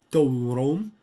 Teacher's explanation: So we've got dorom, that it's supposed to be a nasalized bilabial approximant because it's in between two labialized vowels, which are also back vowels.